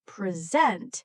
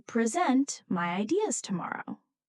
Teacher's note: If we stress the first part present, it means a gift. But if we stress the second part present, it means to give a talk